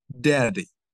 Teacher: you touch that Ridge by your tip of your tongue when you say daddy